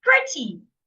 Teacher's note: And it's an adjective, so I should also stress the first syllable.